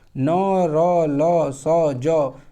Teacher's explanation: ये वत् से होता है, यानी ऊपर से, यानी जीभ ऊपर सटता है, इसलिए इसे वत्स्य कहते हैं।